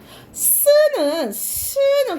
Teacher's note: 막히지 않고 이 사이에서 삐집고 나오잖아요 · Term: 마찰음